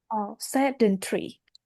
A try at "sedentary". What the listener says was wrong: Mm, Stress on the first of all.